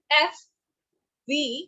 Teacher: constricted, but not totally stopped or blocked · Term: fricatives